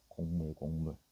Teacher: 앞에 있는 기역이 이응으로 바뀐 거야.